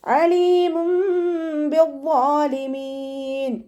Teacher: അയിനിൻ്റെ സൗണ്ടിന് തൊണ്ടയുടെ മധ്യഭാഗത്തു നിന്ന് കൊണ്ടുവരിക. അവിടെയും ഹംസയായി പോവാതെ ശ്രദ്ധിക്കേട്ടോ.